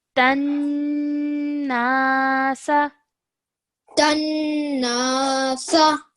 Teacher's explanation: when we're joining the ta to the noon with a shadda on it, we must make sure we produce a nasal sound for 2 seconds over here